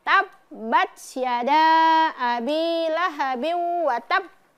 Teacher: Ya, banyak dikasih pantul karena ada ee menyempurnakan huruf ee hukum tasdid dulu. Huruf yang bertasdid kemudian dipantulkan hurufnya.